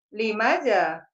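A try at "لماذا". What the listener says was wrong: Bukan limaza. Limaza. Maknya panjang. Limaza.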